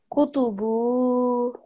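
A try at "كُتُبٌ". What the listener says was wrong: Okay, but you've got to try and get that nasal sound, yeah? Kutubu. And the reason you do that is because the next letter is not mushaddad, it's not ba, and it's not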